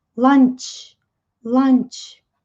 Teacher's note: na pronúncia tem esse CH explosivo.